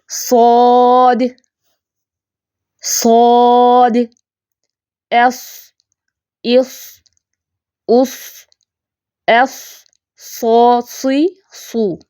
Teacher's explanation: صاد کی ادائیگی میں خاصا پورا منہ بھر جاتا ہے۔ پک میں دیکھ رہی ہیں آپ، جو ہم نے مخرج پڑھا اسی کے مطابق دیکھیں، زبان کی نوک جو ہے وہ ثنایا سفلا کے زیادہ قریب ہے، پیچھے سے بھی زبان اٹھی ہوئی ہے اور خاصا منہ بھرا ہوا ہے، ٹھیک ہے۔ · زبان بالکل اوپر کی طرف اٹھی ہوئی ہے، درمیان سے بھی، پیچھے سے بھی، اور زبان کی نوک ثنایا سفلا کے زیادہ قریب ہے